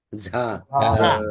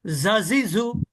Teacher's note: জিহ্বার আগা নিচের দাঁতের কিনারা স্পর্শ করে, তবে এটা অনেকটা শীষ ধ্বনির মতো হয়